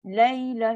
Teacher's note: Tak sempat bunyi huruf ya, terus pergi lam.